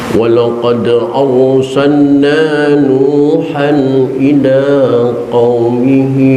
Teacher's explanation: Yang perlu diperhatikan dalam bacaan tadi diantaranya adalah walaqad dal yang mati, qalqalah sughra karena matinya asli bukan kan diwakafkan. Arsalna ra tafkhim tebal Karena ra disukunkan oleh harakat fathah